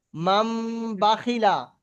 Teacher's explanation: নুন সাকিন অথবা তানবিনের পরে যদি বা আসে, যদি কি বা আসে বা, তাহলে নুন সাকিন অথবা তানবিনকে মিমের দ্বারায় পরিবর্তন করে পড়তে হবে, মিমের দ্বারায় পরিবর্তন করে গুণনা করে পড়তে হবে। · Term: ইকলাব